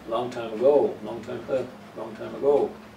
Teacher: is not above it's uh weak form above also a go second syllable is a strong one so the first one is weak